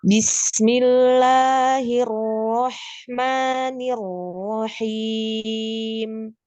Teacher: Ha yang pertama itu harus sama dengan ha yang kedua ya, karena hurufnya ada di tenggorokan tengah, maka keluarnya dari tengah. Jangan ha yang sukun itu keluar dari tengah, ha yang kedua itu sudah berubah makrotnya.